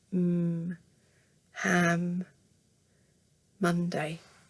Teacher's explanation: Then you've got so same, lips closed, but this time it's actually a nasal sound. The air's coming out of your nose. So you make the same gesture as you would do for a b, but you move it up to your nose.